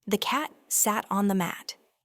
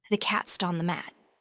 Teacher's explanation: The words that carry the most meaning, the stressed words here, are cat and mat. The unstressed words are the, sat, on, and thee. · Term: stress-timed speech